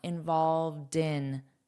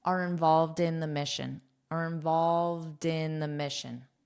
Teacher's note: you'll hear a soft D before I say in